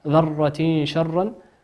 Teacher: تنوين أتى بعده حرف الشين والشين من حروف الإخفاء